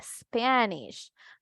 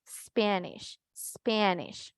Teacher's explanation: cuando una palabra iniciaba con S, seguida de consonante, no lleva sonido de E al inicio, ¿verdad? Entonces nosotros no vamos a decir Spanish, vamos a pronunciar Spanish, Spanish. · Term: sonido puro así de S